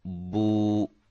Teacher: الٹے پیش کو واو مدہ کے برابر کھینچ کر پڑھیں، کیونکہ الٹا پیش حروف مدہ یعنی کہ واو کے قائم مقام ہوتا ہے، واو مدہ کے برابر ہوتا ہے، اس کی مقدار، اس کو لمبا کرنے کی جو مقدار ہے۔